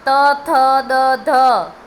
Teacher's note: જબાન તમારી દાંતને અડે જ છે એટલે તમારે ઓળખી જ જવાનું કે આનું ઉચ્ચારણ સ્થાન દંત છે,